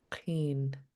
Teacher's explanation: this K is underlined, which means we pronounce it in the back of our throat